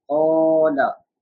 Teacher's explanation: Alif madda, because zabar is coming before alif, so we are stretching.